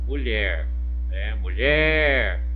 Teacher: Foi a sílaba tônica. O mu, como é mais fraco, foi a sílaba átona.